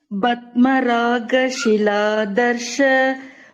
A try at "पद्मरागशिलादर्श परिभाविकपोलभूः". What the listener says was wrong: ஃபுல்லா line break, மூச்சு விடாம ஃபுல்லா சொல்லணும். லைன் ஃபுல்லா, அது ஃபுல்லா ஒரே வேர்டு.